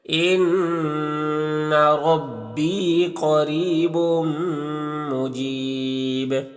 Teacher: تنوین کے بعد میم حروف یومن میں سے تو ادغام ناقص ہوگا، غنہ کے ساتھ میں پڑھیں گے · قاف کو پر زبر تو قاف حروف مستعلیہ میں سے پر پڑھیں گے۔ را کے نیچے زیر را کو باریک پڑھیں گے۔ یہاں پر یا مدہ ہے تو ایک الف کے برابر کھینچیں گے۔